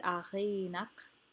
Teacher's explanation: Achi is the iambic foot. A is not stressed. Chi is stressed. Chi is also lengthened because it is open and not the end of a word.